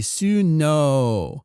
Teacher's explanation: Ball it's not written in Japanese exactly as snow would be snow in Japanese would be suno with an extended o sound there this is one of those names where you drop the extended